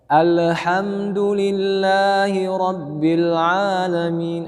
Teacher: Kesalahan yang terjadi selalu dibaca al, lamnya dipantulkan.